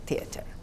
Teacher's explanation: the th is dental aspirate